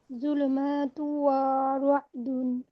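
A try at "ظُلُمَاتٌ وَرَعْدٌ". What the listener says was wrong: এখানে তু, এখানে আমরা মানে গুণনাটা হচ্ছে আমরা বেশিক্ষণ সময় নিয়ে করব, কিন্তু ওয়াতে তো টান নেই আপু।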